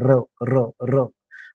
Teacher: त्याच पद्धतीने यात जर र ने इंटरफेअर केलं मध्ये, र ने इंटरफेअर केलं तर कसं होईल मग र प्रकाश, प्रकाश र आणि प एकाच वेळेस जसं र उच्चारला तर जिभेद्वारे आपण जे आहेत ना जीभ अधंतरी तरंगते आणि करंट लागल्यासारखी व्हायब्रेट करते